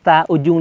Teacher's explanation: ketiga huruf ini secara makhraj dia keluar dari ujung lidah yang bertemu dengan gigi bagian atas